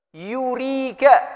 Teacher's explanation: Wa hiya mutaharrika bid dhammah, yaitu huruf ya yang berharakat dhammah. Kalau huruf ya berharakat dhammah berarti dia keluar dari tengah lisan.